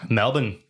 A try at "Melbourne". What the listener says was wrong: It's not. There's no R in it. Apparently, it's pronounced Melbourne, not Melbourne.